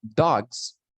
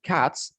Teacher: when I tell you that dogs, I pronounce the S as Z, and when we say cats, I pronounce the S as S